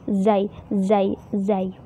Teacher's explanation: kalau zai itu bermainnya di ujung lidahnya, ujung lidah sama gigi seri bawah